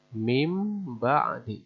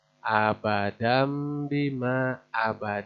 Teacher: March Hai tadi Jabar dan chants menghadapi huruf ini huruf-huruf iqlab maka suaranya disamarkan dipindahkan menjadi suara mim